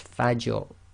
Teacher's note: It will be tafkhim, i.e. heavy, full mouth